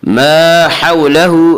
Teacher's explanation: حا کو واضح کر کے پڑھیں، حا کا مخرج وسط حلق ہے